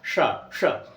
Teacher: और ये वाला जो शा है इसको बोलने के लिए टावर के अक्षर बोलिए, टाठा डाडाना, टाठा डाडाना। आपको वो स्थान पता चलेगा जहां पे मूर्धा है, और वहीं से जीभ सटा करके शा बोलना है